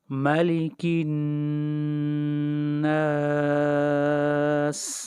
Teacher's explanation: نون کے اوپر غنہ ہے اس لیے کہ نون مشدد ہے